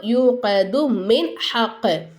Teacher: நூனே சாக்கினும் தன்வீனும் இருந்துச்சுனாக்கா அந்த நூனே சாக்கினையும் தன்வீனையும் நம்ம என்ன செய்யணும் வெளிப்படுத்தி ஓதணும் மூக்கால மறைக்கக்கூடாது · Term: இல்ஹாருடைய சட்டம்